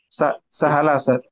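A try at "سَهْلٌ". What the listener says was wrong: Bukan sahala. Lun. Tanwin isim kan ditanwin. Sahlun.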